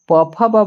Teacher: याद रखिए प फ ब म तक जो है वह ओष्ठ तक उच्चारण होता है